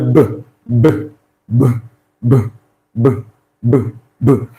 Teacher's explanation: you will notice that the vocal cord also vibrated, making it a voiced consonant sound.